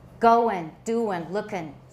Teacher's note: 英 文 是 ing 这 个 词 尾， 有 时 候 在 很 口 语、 很 casual 的 场 合 的 时 候， 你 可 以 念 作 in